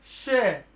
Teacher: इस वर्ड को बोलने में में एक वायु में घर्षण आपको अपने मुख के अंदर प्रतीत होगा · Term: संघर्षी व्यंजन